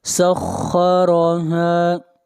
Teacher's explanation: وَأَمَّا عَادٌ فَأُهْلِكُوا بِرِيحٍ صَرْصَرٍ عَاتِيَةٍ سَخَّرَهَا، خا کو موٹا پڑھیں گے، خا حروف مستعلیہ میں سے ہے، اور را کو موٹا پڑھا جائے گا، اور را کے اوپر زبر ہے، اور ہا کو کھینچ کر پڑھیں گے ایک الف کے برابر، اس لیے کہ یہاں پر الف مدہ ہے۔